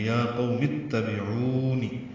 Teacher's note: آمن یا قوم، یا کھڑا زبر قائم مقام مد اصلی، قولین، اور میم کی زیر کو اتبعون کے تا سے ملانا ہے، میم کو تا سے ملائیں گے